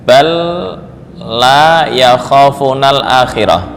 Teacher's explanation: Idgham di sini itu hanya sekedar lewat ya. Hanya sekedar lewat lewat ya. Bukan dibaca dengan dengung.